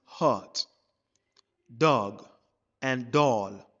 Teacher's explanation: our lips are quite rounded, not completely rounded. It's not like the short U sound. · And also, the shorter sound, when you pronounce it, is very close to the back of the tongue. Very close to the back of the tongue, and it's almost completely open also. It's in between the mid-open and the open. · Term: short O sound